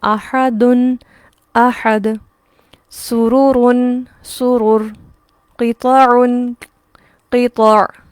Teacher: وقف کی صورت میں پیش تنوین بھی مکمل طور پر ختم ہو جاتی ہے